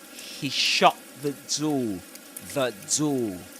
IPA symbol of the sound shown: ðə